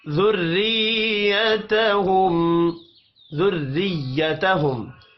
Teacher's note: را کو زیر کی وجہ سے باریک پڑھیں گے